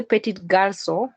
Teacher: in this French data here, the final consonant has been dropped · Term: deletion